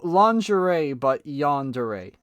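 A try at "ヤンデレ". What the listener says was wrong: But yandere, no. I'm like, bro, that is not how you say it. Act like it has an A instead of an E on the end of it. Yandere.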